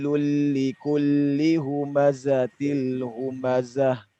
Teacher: diminta para Ikhwan untuk menyengajakan berdesis pada huruf Zai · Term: sifat desis